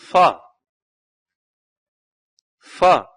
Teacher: fa is made by pressing the lower lip lightly against the upper front teeth, a matter that obstructs the air partially, causing friction